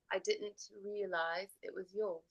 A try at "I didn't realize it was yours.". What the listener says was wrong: Can I have a little more crisp teas there?